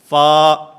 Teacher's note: اوپر والے 2 دانت جن کو ثنایا علیہ کہا جاتا ہے، ان ثنایا علیہ کے کنارے جس وقت نیچے والے ہونٹ کے اندرونی حصے سے ٹکراتے ہیں تو اس سے فا ادا ہوتا ہے